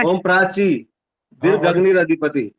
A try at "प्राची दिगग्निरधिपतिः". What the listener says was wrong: दिगग्नि रधिपति, ये होता है। दिगग्निर नहीं होता। आग दिगग्निर बोलोगे तो र आधा हो गया, ये र आधा नहीं है ये। प्राची दिग अग्नि, अग्नि के बाद विसर्ग होती है, अग्नि अधिपति है तो रधिपति इसलिए बना हुआ है वो, र आधा नहीं है यहाँ पर।